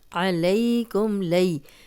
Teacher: اس یا لین ہے، اس کو بغیر کھینچے نرمی سے پڑھیں گے